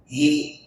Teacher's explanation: ہی جو سینے سے آنا چاہیے، حلق کے آخری حصے سے آنا چاہیے، ہی۔ للہ ای نہیں، ای کی آواز نہیں آنا چاہیے، ہی۔